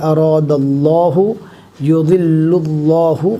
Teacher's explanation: اللہ کے لام سے پہلے زبر ہے اور یہاں پر اللہ کے لام سے پہلے پیش ہے لہٰذا ان دونوں اللہ کے لام کو پور پڑھا جائے گا